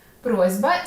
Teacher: Ти вже знаєш, що асиміляція за дзвінкістю відбувається у слові просьба. Перед дзвінким б глухий с уподібнюється до свого дзвінкого відповідника з.